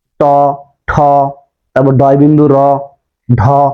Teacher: এই মুর্ধা থেকে যে ধ্বনিগুলো উচ্চারিত হয় সেগুলোকে বলা হয় মূর্ধ ধ্বনি।